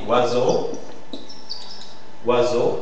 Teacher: la voyelle ou qui forme une diftong avec une autre voyelle pour former une seule syllabe ça c'est l'important c'est une seule syllabe elle forme uneong ok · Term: semi-voyelles